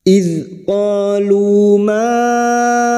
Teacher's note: panjangkan idzqolu maan hati-hati pada saat membunyikan huruf hamzah setelah Mad huruf hamzah jangan diseret ya Hamzah memiliki sifat syiddah maka harus dibaca jelas dan tegas